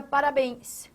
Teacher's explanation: A palavra parabéns possui a sua tonicidade aqui, na última sílaba, bens. Ou seja, aqui você de novo está trabalhando com uma oxítona.